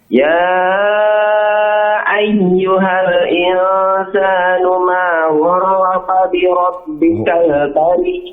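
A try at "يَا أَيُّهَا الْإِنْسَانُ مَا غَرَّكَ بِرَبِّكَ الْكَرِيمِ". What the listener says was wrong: K-nya tipis ya. Gharraka. Ka tipis.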